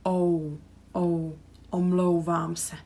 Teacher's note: So you have O and U connected, so it's really smooth. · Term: diphthong